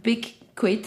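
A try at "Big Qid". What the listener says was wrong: It's not really quid, because quid would be like QUID. it's QID.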